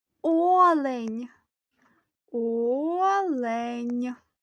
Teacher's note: слово складається з двох складів починається на голосний звук та всього в ньому чотири звуки наголос падає на перший склад